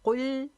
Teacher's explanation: کاف موٹا لام باریک